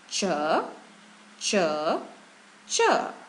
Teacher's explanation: there should be a puff of breath when you say it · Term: aspiration